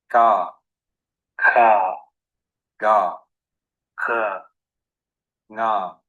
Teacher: The gutturals are formed at the back of the mouth, and these are also called velars.